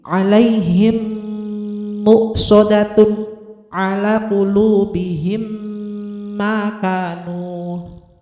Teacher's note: mim sukun dimasukkan atau digabungkan dengan mim di depannya dan berdengung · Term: idgham mimi